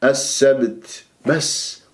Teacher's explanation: والسبت السب السبت شوف السبت السب السب السبت بس ما السبت، ويختفي عندك صوت التاء والباء مقلقلة قلقلة صغرى في الباء في وسط الكلام وما أمسكها. السبت لا السبت لا السب السب أضرب المخرج وأهرب السبت بس، وجبت الهمس اللطيف لأن ستسكن هذه التاء بالوقوف على جيم جواز الوقف هنا.